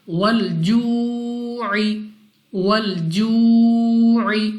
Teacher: Next ہمارے پاس واو ساکن سے پہلے پیش واو مدہ، اور واو مدہ کو ہم 2 سیکنڈ تک کھینچ کر پڑھتے ہیں۔